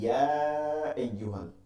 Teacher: সামনে লম্বা হামজা থাকার কারণে এইটাকে একালিফকে তিন আলিফ টেনে করতে হবে, এটাকে বলে মাদ্দে মুনফাসিল